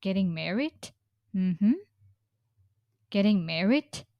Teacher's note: We use kind of rising tone to indicate that we haven't finished talking that uh we'll continue talking.